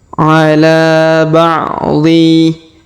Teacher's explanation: Huruf La kita panjangkan 2 harokat karena alif kecil di depannya atau di atasnya, sedangkan juga di depannya terdapat alif bengkok atau maksurah.